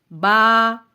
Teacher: با بند ہونٹوں کے گیلے حصے سے ادا ہوتا ہے، با کو جب ادا کریں تو ورٹیکلی منہ کو کھولیں یعنی اسمائلنگ فیس سے، با ہونٹوں کو پھیلائیں گے۔